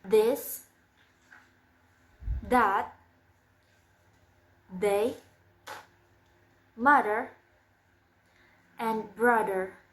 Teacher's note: It sounds d again the it's voiced and the place of articulation is dental and the manner of articulation is fricative